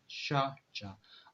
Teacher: तो इस ये वो साउंड है, पैलेटल साउंड, जिसमें टंग और जो पैलेट है ये दोनों इन्वॉल्व होते हैं इसके प्रोडक्शन के लिए, ठीक है। तो sound produce with the tongue and the पैलेट are called palatal sound